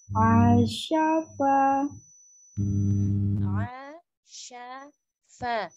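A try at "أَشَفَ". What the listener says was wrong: Coba jangan diseret nih satu-satu hurufnya Mi. Asyafa, asyafa.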